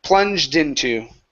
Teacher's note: Take the D, cut the D off, and connect it to into.